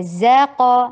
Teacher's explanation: زام صفیر کی ساؤنڈ دیجیے اور قاف کے اوپر قلقلہ کیجیے اور ہیوی بھی کیجیے